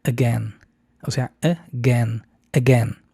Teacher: Y es muy común, pero se pronuncia no con diptongo ei, aunque también algunas personas así lo pronuncian como again. Es más común decir con schwa al principio, después acento en gen